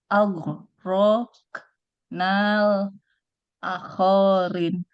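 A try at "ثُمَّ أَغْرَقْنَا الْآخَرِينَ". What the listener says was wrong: Panjang. A-nya 2 harakat. Panjang.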